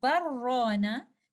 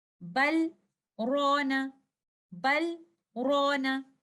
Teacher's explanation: in our way of hafs, we recite this lam with izhar. There is a breathless pause between letter lam and letter ra.